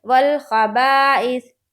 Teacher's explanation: دیکھیے خا کو نہیں کھینچ رہے، با الف زبر با کو کھینچ رہے کیونکہ الف مدہ ہے۔ الف مدہ ایک الف کے برابر کھینچ کر پڑھا جاتا ہے، اس لیے والخبائث۔